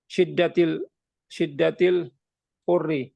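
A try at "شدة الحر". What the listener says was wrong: tadi kan bukan hurri, hari gitu.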